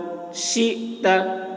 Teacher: حمزہ ساکن ہے، حمزہ میں جھٹکا لگے گا